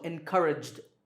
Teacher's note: Here the last sound is j, which is voiced, so encouraged.